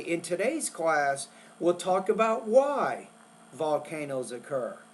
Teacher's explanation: you might do a short pause after the word why